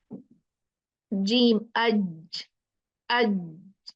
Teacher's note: From the middle of the tongue and the roof of the mouth